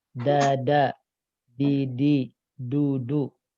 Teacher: Nah, ini ujung lidah nempelnya dengan langit-langit bagian depan. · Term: huruf D